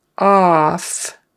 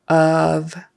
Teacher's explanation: of is not really an o sound it's more like a u a short U